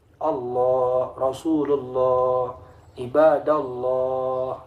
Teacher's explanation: ketika tafkhim lafaz Allah itu bersuara O